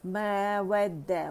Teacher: व complete rolling of द lips